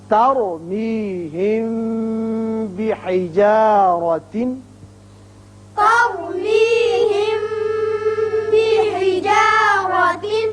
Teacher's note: اب میم ساکن کے بعد با آ رہا ہے، یہ قاعدہ آپ پڑھ چکے ہیں کہ جب میم ساکن کے بعد با آ جائے تو اسے اخفاء شفوی کہتے ہیں، یہاں ایک الف کے برابر آواز ٹھہرتی ہے۔ بحجارہ را کے اوپر زبر ہے اس لیے اس کو پر پڑھیں گے۔